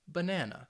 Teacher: banana no it's just banana and i think when you're listening you should be able to hear that second syllable get a little more emphasis